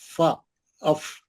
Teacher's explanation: सामने के दो दांत ऊपर वाले बड़े दात जो सामने के रहते दो बड़े दात नीचे के होठों पर सख्ती से बिठा देना उस नीचे के होठ पर रख दे उसको दबाना दबा के